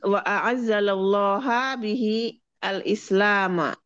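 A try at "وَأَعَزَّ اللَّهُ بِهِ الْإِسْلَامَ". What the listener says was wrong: Ulangi wa a'azza. Tidak pakai lah. Tidak pakai lah. Wa a'azza Allah.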